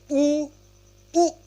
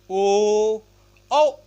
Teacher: हम जीभ के पीछे भाग से पढ़ रहे हैं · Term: पश्च स्वर